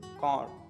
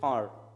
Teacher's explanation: Car, strong sound. R sound is pronounced strong. Car. In British, soft or no R sound.